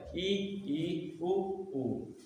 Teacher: बोलते समय मुख लगभग बंद रहता है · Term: समवृत